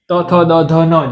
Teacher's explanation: ત બોલશો તો દાંતને અડશે જીભ.